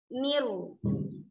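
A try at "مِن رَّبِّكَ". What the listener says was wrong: Bukan miru. Itu sekarang moncong. Mir rabbik. Mir Bukan mir. Lidah sama tadi. Moncong. Enggak boleh moncong. Mir rabbik.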